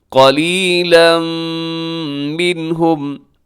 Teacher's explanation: قلیلا پہ تنوین کے بعد منہم کی شروع میں میم ہے جو کہ یرملون کا یہاں پہ ہوگا ادغام اور غنے کے ساتھ ، قلیلا منہم۔ آگے دیکھیے گا رموز اوقاف میں سے طا